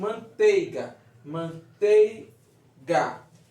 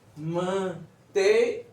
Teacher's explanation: A gente não está escutando o i. Então, o i é uma semivogal.